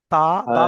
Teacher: জিহ্বার আগা সামনের উপরের দুটি দাঁতের গোড়ার সঙ্গে লাগিয়ে তা আর দাল উচ্চারিত হয়।